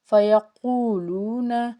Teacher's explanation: قاف کو پر پڑیں گے کیونکہ قاف جو ہے وہ حرف مستعلیہ کا حرف